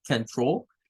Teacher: la primera sílaba de control pues es el schwa